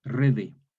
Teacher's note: la T, sorda intervocálica, sonoriza en D.